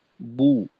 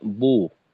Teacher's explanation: পেশের উচ্চারণ কখনোই আহ, ওকারের মতো হতে পারে না